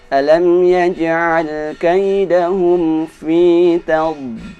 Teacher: Huruf dad ketika mati dia ditahan dengan kuat.